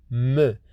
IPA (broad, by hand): m